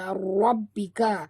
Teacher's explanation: Okay, dekat ba ada tasydid, jadi kita kena tekan ataupun jud. Dan ra sini ra tafkhim tebal, rabbika.